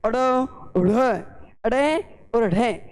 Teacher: ताड़न का मतलब होता है झटका देना, कि जब हम इन व्यंजनों का उच्चारण करते हैं तो अपनी जो जीव है वो कठोर तालु के साथ झटके के साथ टकराती है · जीवा कठोर तालु से झटके के साथ टकराने के बाद तुरंत अपनी स्थिति में आ जाती है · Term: ताड़न जात